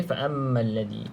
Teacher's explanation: nampak mim bersabdu seperti mana nun yang bersabdu, dengung 2 harakat wajibul gunnah